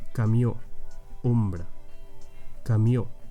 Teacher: The closed O, or O tancada, is also an O, but your lips form a more closed or narrow opening when you pronounce it